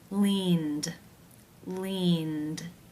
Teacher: and the D sound ended how do you pronounce this word the final sound of the verb an infinitive form is the N consonant sound this is a voiced consonant therefore it is case 2 where the ed is pronounced as the D sound